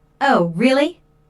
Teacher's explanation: notice the rising intonation on really this shows that the speaker is surprised